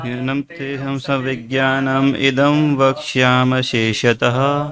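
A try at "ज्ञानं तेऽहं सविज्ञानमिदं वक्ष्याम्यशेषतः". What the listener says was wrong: थोड़ा सा high tune पे गाइए। देखिए वक्ष्याम्य अशेषतः से बोलना होगा। वक्ष्याम्य, वक्ष्याम्य शेषतः, नहीं तो वो अलग से सुनाई पड़ रहा है।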